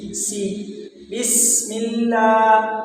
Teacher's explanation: سین میں سیٹی کی آواز نکالیں گے۔ سی بسم اللہ، لفظ اللہ کو باریک پڑھیں گے۔